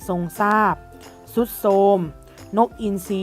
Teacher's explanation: ออกเสียงตัวท.ทหารและเรือนะคะเป็นเสียงซอโซ่นะคะ